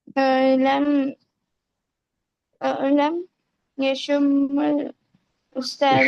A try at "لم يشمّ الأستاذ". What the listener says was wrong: उस्ताजा नहीं, उस्ताज लम यशुम्मा अल उस्ताजु رائحة طيبة بل يشم رائحة خبيثة।